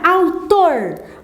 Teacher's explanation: você tem tor como sendo sílaba tônica